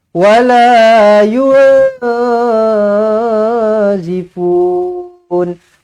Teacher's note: Tetapi disebabkan di sini nun kosong bertemu dengan zai, dia ikhfa, maka ikhfa tidak perlu cecahkan lidah ke lelangit. Biarkan dia tergantung, biarkan dia terapung sahaja.